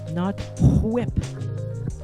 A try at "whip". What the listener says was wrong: Why are you putting so much emphasis on the H? Say whip.